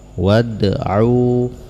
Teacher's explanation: maka qalqalahnya akan terdengar sedikit, disebut dengan qalqalah sughra